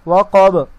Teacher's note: یہاں پر قلقلہ کریں گے سکون کے حالات میں